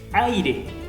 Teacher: tengo una vocal abierta más una vocal cerrada